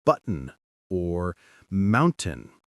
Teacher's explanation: They close the vocal folds in the throat for a moment, stopping the air, and then release it.